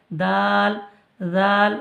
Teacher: জিভের আগা সামনের উপরের দুই দাঁতের গোড়ার সাথে লাগিয়ে উচ্চারিত হয়